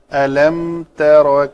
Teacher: ت پتلے حروف میں سے ہے، را موٹے میں سے ہے، را کے اوپر زبر ہو تو موٹی پڑی جاتی ہے